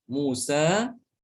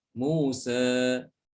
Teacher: Imalah sugro sama, pengucapan huruf di antara alif dengan ya, akan tetapi lebih dekat kepada alif.